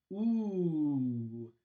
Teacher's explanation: That is a high back rounded vowel.